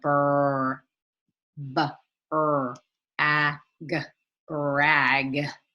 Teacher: The B and the R each have their own sound, but they're blended together.